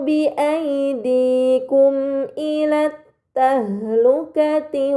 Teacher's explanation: terdapat mim sukun bertemu dengan huruf hamzah ini dinamakan izhar syafawi maka mim sukun dibaca secara jelas